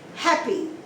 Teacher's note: is always on the first syllable example happy it's an adjective you stress on the first syllable the second syllable is very weak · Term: first syllable stress